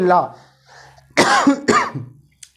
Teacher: उच्चारण में हवा जो है वो जीभ के पार्श्व भाग यानी कि बगल से पास होकर के निकलती है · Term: पार्श्विक व्यंजन